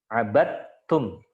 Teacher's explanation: Berarti huruf dal bertemu dengan ta. Nah, itu idgham.